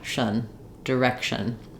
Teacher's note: You don't want any length on it. You can go almost immediately from the sh to the n with very little vowel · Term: schwa